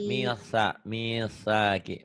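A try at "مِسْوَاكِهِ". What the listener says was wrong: Misaki. Kayak lidahnya digigit ya. Dicadalkan. Misakihi. Misakihi.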